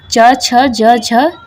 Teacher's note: च, छ, ज, झ तालव्य व्यंजन है न कि मूर्धन्य व्यंजन।